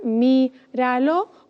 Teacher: Míralo, contamos desde desde detrás, desde el final, ¿vale? Y la sílaba tónica está antes de la penúltima.